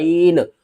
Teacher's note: عین کو ہم نے حلق کے درمیان والے حصے سے ادا کرنا ہے